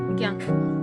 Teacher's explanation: ज प्लस ञ बराबर ज्ञ होगा लेकिन उच्चारण की दृष्टि से क्या होता है ग प्लस य